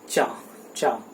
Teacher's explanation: तो चा में आप ध्यान दीजिए जीभ जो है वो कहीं ना कहीं तालू में नीचे की ओर छू रही होती है।